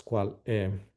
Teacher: We have just the last vowel that drops